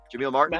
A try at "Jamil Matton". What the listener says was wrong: Matton. Matton. Yeah, no R.